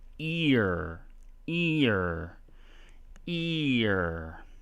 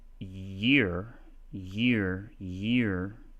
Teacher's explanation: this big smiling open E in ear. And year starts with a kind of a smaller closed mouth sound, that Y